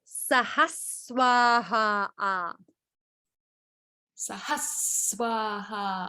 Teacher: It's not saha, it's sahas. You're landing on a sakara.